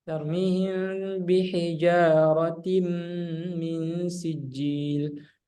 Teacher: Jadi tanwinnya ini nggak dibaca langsung ke mim. Ya, langsung dilompat ke mim. Karena sudah dimasukkan. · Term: idgham bi gunnah